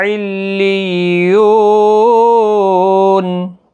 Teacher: علیون، تشدید کا خاص خیال رکھیں، یو واو مدہ ہے، وقف کی صورت میں نون ساکن پڑا جائے گا، 3 سے 5 الف کے برابر کھینچ کر وقف کریں گے